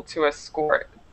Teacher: to escort is the verb so the the stress is on the second syllable